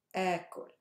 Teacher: This becomes a super long alif as if it has a matta.